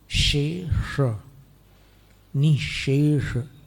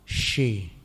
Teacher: निःशेष में प्रथम शय का उच्चारण तालव्य है, इसलिए जीभ नीचे जाएगी, नीचे वाले दांतों की पंक्ति के पीछे की तरफ जाएगी